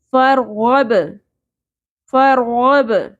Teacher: فرغب فرغب را ساکن پر ہوگا، غین حروف مستعلیہ میں سے ہے، غین بھی پر ہوگا اور با کے اوپر قلقلہ، با ساکن پہ قلقلہ ہوگا.